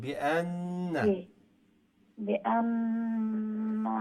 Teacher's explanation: তাসদীদ আলা নুনকে গুণনা করে পড়তে হবে। দুইবার পড়তে হবে।